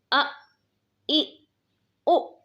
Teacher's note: حمزہ کی صفت میں سختی پائی جاتی ہے اور حمزہ میں جھٹکا بھی دیتے ہیں